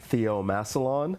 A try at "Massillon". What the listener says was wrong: Massillon. With no N. You don't say the N.